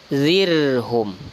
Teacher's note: Nah, ini baru tipis, zirhum. Karena sebelum ra itu ada huruf yang berharokat kasrah atau di bawah